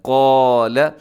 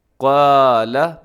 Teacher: تو الف کے بارے میں یہ حکم ہے کہ الف سے پہلے اگر موٹا حرف آ جائے تو الف موٹا ہوتا ہے، اس سے پہلے باریک ہو تو الف باریک ہوتا ہے۔ تو یہاں الف سے پہلے قاف موٹا آ گیا، تو ہم نے الف کو بھی موٹا کرنا ہے